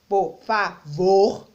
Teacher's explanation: o vor é a sílaba mais forte